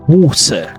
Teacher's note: British English, however, typically pronounces clear, crisp T sounds.